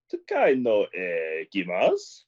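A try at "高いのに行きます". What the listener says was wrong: Exactly. Takai no ikimasu. Yeah, exactly. Except the intonation was very strange.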